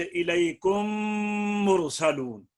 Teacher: ہے کہ میم ساکن کے بعد میم متحرک آ جائے, تو پہلی میم کو دوسری میم میں اس طرح ملاؤ کہ دوسری میم مشدد ہو جائے اور ایک الف کی مقدار میں غنہ ادا کر کے میم کو ادا کرو